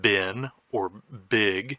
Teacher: voice that first sound and say bin or big and create a minimal pair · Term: voicing